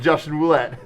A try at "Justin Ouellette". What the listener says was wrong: Justin Ouellette. It was he dropped the R. The R is silent.